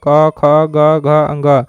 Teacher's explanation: क वर्ग का उच्चारण कंठ से होता है